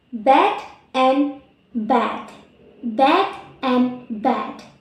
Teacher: D, voice, alveolar, and plosive